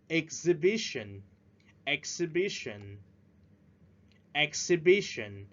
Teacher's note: Remember to stress at the third syllable.